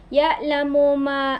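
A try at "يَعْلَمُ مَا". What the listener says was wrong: Ayusin mo, ito ay ain. Kaya lang ayusin, huwag mong palitan ng hamza. Ayusin mo, bigkasin ng ya'lamu, ganun.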